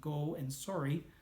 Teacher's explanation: the slightly more Minnesota, Wisconsin, Ontario O sounds that I use in go and sorry